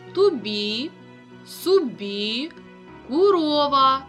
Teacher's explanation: Ненаголошений звук о наближається до у